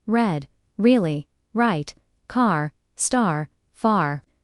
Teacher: Not rolled like in Spanish or Vietnamese. The tongue curls slightly back. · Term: The American R sound